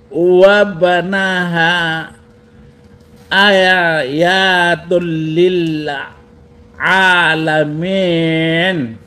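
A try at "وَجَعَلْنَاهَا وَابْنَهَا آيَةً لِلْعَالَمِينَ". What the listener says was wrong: itu ba mati harus dibaca kolkolah, a dibaca panjang 2 harakat, ya dibaca pendek dan itu bukan tul tapi tal.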